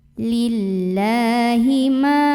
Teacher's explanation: maka cara membacanya huruf lam nya kita panjangkan dua harokat